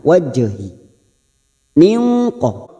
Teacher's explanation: qalqala sugro jangan lupa dipantulkan